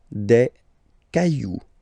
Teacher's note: remember, you don't pronounce it, the final X